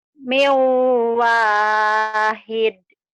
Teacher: Ini nun mati atau tanwin ketemu waw idgham bi gunnah. Dimasukkan, diidghamkan, disertai dengan dengung, ditahan.